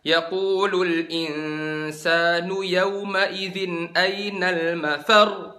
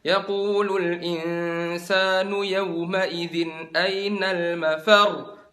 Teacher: Jadi di akhirnya itu kan ada tasdidnya, mafar. Kalian angkat suaranya. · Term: naber